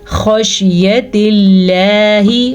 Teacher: خا کو پر پڑھنا ہے، لفظ اللہ کو باریک پڑھنا ہے